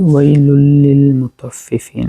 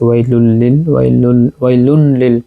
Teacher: তানবিনকে লামের সাথে ইদগাম করে পড়ছি। ওয়াইলুন লিল পড়ি নাই, ওয়াইলুল লিল মুতাফফিফিন।